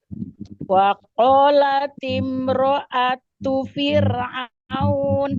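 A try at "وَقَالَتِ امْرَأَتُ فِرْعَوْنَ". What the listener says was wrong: Huruf ro-nya lebih tebal lagi. Ro'atu.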